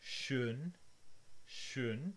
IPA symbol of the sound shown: ʃøn